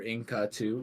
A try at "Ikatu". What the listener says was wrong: Ikatu. There is no N.